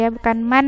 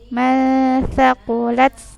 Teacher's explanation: Kalau man kan nunnya jelas sekali ya. Kini jadi tidak terlalu jelas nunnya. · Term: ikhfa